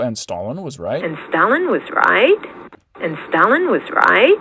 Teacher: she's going really down low in her pitch range · she's producing that regular kind of yes-no question intonation pattern of a low star followed by a high at the tail end